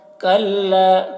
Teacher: کاف کو باریک اور لام میں کاف کو ملائیں گے اور تھوڑا کھینچیں گے الف کو